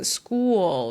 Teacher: it's called dark L and there is like an extra schwa